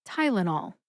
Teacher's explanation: Put all 3 syllables together and you get Tylenol. Emphasize tie. See if you can hear that emphasis when I say it again.